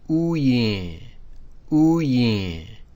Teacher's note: that open vowel uses a high tone even though it has no high tone symbol. And that's just the way it's pronounced.